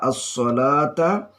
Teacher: la panjangnya 2 harakah mat tabi'i